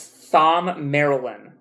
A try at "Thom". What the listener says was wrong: The H is silent.